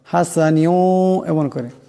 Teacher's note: হাসানিউ এখানে নুনের নিচে দুই জেরের তনবিন, এরপর ওয়াও আসছে, এখানে নুন ওয়াবের সাথে ঈদগাম হয়ে যাবে এবং ঈদগামের একালে পরিমাণ গুণনা হবে।